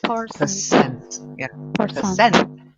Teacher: the stress isn't on per, it's on cent.